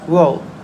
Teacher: my subject pronounce the word world as W where she drops the r sound